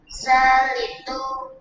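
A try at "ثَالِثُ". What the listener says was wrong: Salisu. Bukan salitu. 3 itu salis. Ulangi, asalisu. Bukan ta itu. Bedakan antara ta dengan sa.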